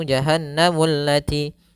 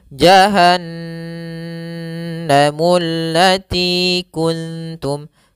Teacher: yaitu apabila adanya nun berharakat tasydid atau mim berharakat tasydid, maka ini kita namakan dengan bacaan ghunah. Cara membacanya yaitu suara n-nya ditahan atau suara mnya ditahan. Maka di sini jahanamu tidak langsung jahanamullati tapi tahan dulu dua harakat.